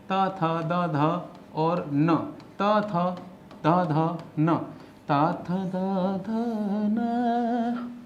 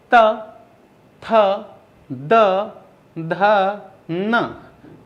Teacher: बोलते समय हमारी जिह्वा, हमारी जीभ दांत को, ऊपर वाले दांत को स्पर्श कर रही है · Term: दंते वर्ण